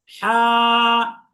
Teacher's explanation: এই হা হরফটি উচ্চারণ হয় হলক বা গলা এর মাঝখান থেকে